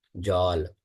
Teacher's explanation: अब बंगाली भाषा में जल नहीं बोला जाता सीधे, उसमें हल्का सा ज का जो अ की मात्रा होती है उसको थोड़ा सा औ की तरह बोला जाता है